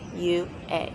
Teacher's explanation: The tongue goes up just a little bit more with the A sound